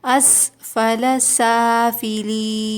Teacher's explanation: یا ساکن سے پہلے زیر ہے، یہاں پر بھی 2 کاؤنٹس کھینچیں گے، حروف مدہ ہے